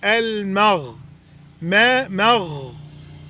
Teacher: والغين حرف رخو يعني بياخد زمن كده.